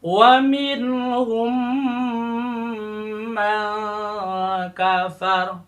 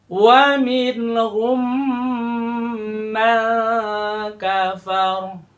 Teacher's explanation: Bertemu dengan pada kata mim lagi, pada kata man kafaro. Maka terjadi idgham, menyatukan dua huruf, dijadikan satu, ditahan di selama satu alif atau dua harokat, dua ketukan